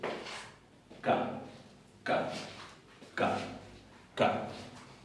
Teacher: Es el sonido sordo, velar, oclusivo de nuestra letra C.